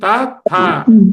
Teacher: upper teeth వెనక భాగాన్ని నలుక touch అవుతుంది